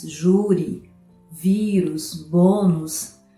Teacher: palavras em que a penúltima sílaba mais forte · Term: paroxítonas